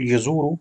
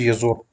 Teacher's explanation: We drop the wow because we want to have the sukoon. So yazur, it becomes yazur.